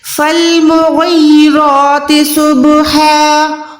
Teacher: غین کو آپ نے حلق کے اوپر والے حصے سے ادا کر کے منہ کو گولائی کر کے پروپر موٹا ادا کرنا ہے۔ یہ حروف حلقی میں بھی آتا ہے، موٹے حروف میں بھی آتا ہے۔